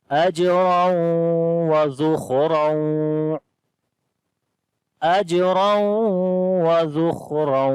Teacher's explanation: جیم کے اوپر قلقلہ کریں گے، را کو موٹا پڑھیں گے